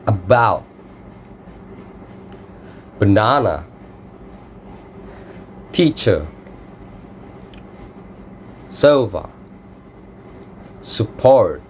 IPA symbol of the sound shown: ə